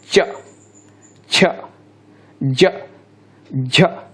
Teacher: स्पर्श संघर्षी पूछे तो पूरा ये च वर्ग आ जाता है। · स्पर्श होगा जीभ का तालु के साथ, और फिर इसके बाद वो बोलेंगे तो बूंदाबांदी ज़्यादा होगी।